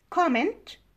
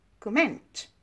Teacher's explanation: Now, comment, this is a noun, and stress is on the first syllable. Comment is a verb, and stress is on the second syllable.